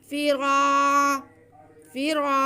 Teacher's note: रा पर ज़बर है इसलिए हम रा को पुर पढ़ेंगे और फिर उसको एक अलिफ के बराबर खींचेंगे। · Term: अलिफ मद्दा